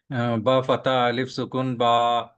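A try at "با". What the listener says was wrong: अलिफ सुकून नहीं बोलेंगे, अलिफ बोलिए।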